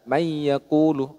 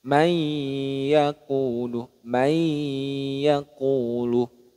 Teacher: Meleburkan bunyi nun sukun, kemudian memanjangkan dengungannya.